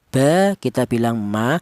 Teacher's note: untuk huruf mim dan huruf ba ini dihasilkan dari kedua bibir yang rapat